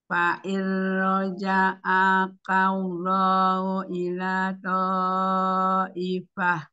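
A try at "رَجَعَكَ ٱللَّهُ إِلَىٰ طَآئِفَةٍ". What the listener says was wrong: Kemudian tadi A-nya agak sedikit apa panjang, jadi harusnya satu harokat, tapi jelas.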